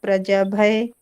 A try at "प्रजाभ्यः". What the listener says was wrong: आधा भ है ना, आधा भ है ना, भय नहीं, भ्यः, प्रजाभ्यः।